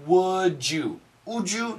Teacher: almost always we have this J sound